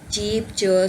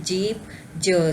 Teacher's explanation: अब इसमें जो फर्स्ट वन जो है वो च साउंड वॉइसलेस है और जो ज साउंड है वो वॉइस्ड है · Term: एफ्रिकेट्स